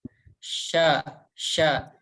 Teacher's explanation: itu monyong ya tapi yang harus kita ketahui bahwa ini itu tempat keluarnya bukan dari bibir kita ya tapi dari tengah lidah kita nempel ke tengah langit-langit atas sya sya jadi nggak monyong juga bisa gitu dan tidak boleh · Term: huruf syin, huruf shin